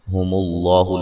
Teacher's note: لفظ اللہ کو موٹا ادا کریں گے، اس سے پہلے حرف پر پیش ہے